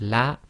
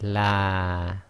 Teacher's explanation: the alif as we see here in the la will not have its own sound on it it's helping to lengthen the sound before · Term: long vowel